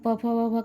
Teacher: वह प वर्ग में आते हैं और प वर्ग का उच्चारण प वर्ग में आने वाले अक्षरों का उच्चारण ओष्ठ से होता है